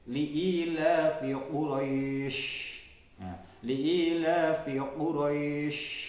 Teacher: sifat tafasyi, menyebarnya angin di mulut. Ini disandang oleh huruf shin.